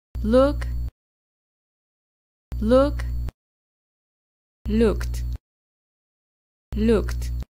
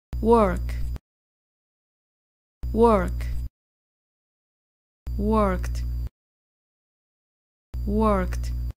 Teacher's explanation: Las pronunciamos agregando el sonido T al final de la palabra.